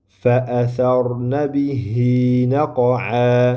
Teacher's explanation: Vaqf qilganimizda alif bilan naqo'a deb mad qilib to'xtaymiz